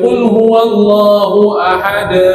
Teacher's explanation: dilepaskan qalqalah dalam tempoh yang singkat. Qalqalah tak boleh panjang.